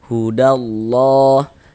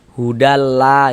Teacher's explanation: huruf lam jalalahnya itu dibaca tebal, dibaca tafkhim. Sehingga ini kita baca hudallah.